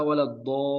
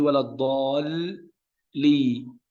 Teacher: Di sini harful lam diucapkan 2 kali, yang lam yang pertama sukun waladdall. Nah, ini dengan pertemuan bagian makhrajnya lam sakinah. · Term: harf musyaddad